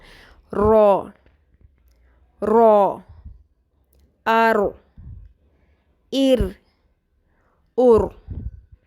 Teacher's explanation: جب زبان کی نوک پشت کی طرف سے اوپر والے سامنے کے 4 دانتوں کی جڑوں سے ٹکراتی ہے تو را ادا ہوتا ہے. را کی آواز میں تھر تھراہٹ ہوتی ہے